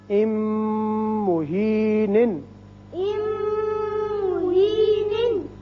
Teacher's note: دو دفعہ یہاں میم میم سے ملا، پھر دوبارہ تنوین کا میم سے ملا. دونوں جگہ ہم ناک میں آواز تھوڑی دیر ٹھہرائیں گے